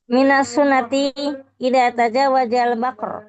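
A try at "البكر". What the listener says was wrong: Bukan bakar. Bikra.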